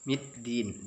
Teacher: huruf dal, ujung lidah bertemu dengan gusi. Middin, dal, da, bukan d tapi da.